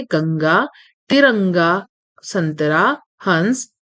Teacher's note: इसका प्रयोग वर्णों के ऊपर बिंदु के रूप में किया जाता है। इसका उच्चारण नाक से होता है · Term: अनुस्वार